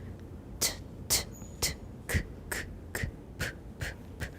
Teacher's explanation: you can hear that the highest pitch is associated with t, the next with k, and the lowest with p